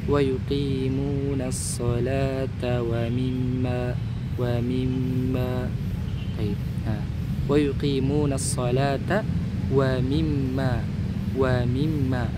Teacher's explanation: Huruf mim di situ bertasydid. Maka didengungkan ya teman-teman ya. Dighunahkan ditahan dua harakat. Ya, adanya udara yang keluar dari pangkal rongga hidung dengan disertai penahanan selama dua harakat.